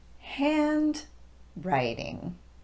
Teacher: because it's now the second word in a compound noun we're going to de-emphasize both syllables in that word